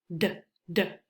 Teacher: The tip of your tongue will touch behind your top teeth. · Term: letter D